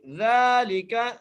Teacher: دال کے اوپر کھڑی زبر ہے، 1 الف کی مقدار کھینچ کے پڑھیں گے، لام کے نیچے زیر ہے، کاف کے اوپر زبر ہے.